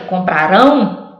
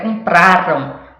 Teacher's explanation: Compraram é o pra que é mais forte. Lembra que comprarão era o rão, agora é compraram, o pra é forte